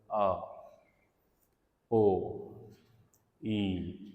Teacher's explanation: इसमें कोई ना फ्रिक्शन इन्वॉल्व हो रही है, ना ही कंप्लीट जो है वो ब्लॉक किया जा रहा है, बल्कि काफ़ी वाइड पैसेज जो है वो एयर को अवेलेबल होता है। तो वाउल साउंड जो हैं उसमें पैसेज ऑफ एयर खुला होता है काफ़ी ज़्यादा।